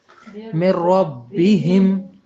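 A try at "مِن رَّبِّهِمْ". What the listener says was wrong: مر ربہم. اس میں کیا ہوا کہ نون کی آواز تک نہیں آئی، یعنی مکمل داخل ہو گیا. پہلے میں لام اور دوسرے میں رے. را جو ہے آپ نے دیکھا نا لر، یعنی جہاں یہ 2 آئیں گے وہاں مکمل ہوگا.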